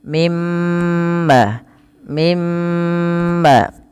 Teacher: suara nunnya dimasukkan ke mim dan ditahan sepanjang dua harakat mimma mimma baru dilepaskan kemudian ibrahima musalla Ibrahim pantulkan pada lafal